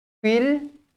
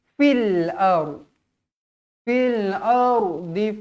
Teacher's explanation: Fil alif lam qamariyah. Jadi jelaskan huruf lam matinya.